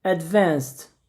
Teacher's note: ele já me deu um erro ali dizendo que eu tenho que pronunciar um pouco mais forte a segunda vogal